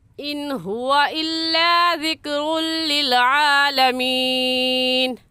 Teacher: پر غنہ نہیں کریں گے، ایسے پڑھیں گے ان ہوا الا، ذکر ال پر بھی غنہ نہیں کریں گے کیونکہ تنوین کے بعد حروف یرملون میں سے لام آگے ہے